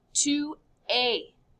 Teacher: It's just pronounced A. Don't say the S.